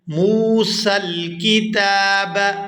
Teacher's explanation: یہاں میم کو واو ساکن کے ساتھ ملائیں گے تو کھینچ کر ادا کریں گے۔